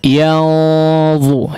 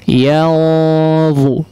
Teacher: ada huruf ikhfa yang tebal, ya, sehingga ikhfanya pun menjadi menebal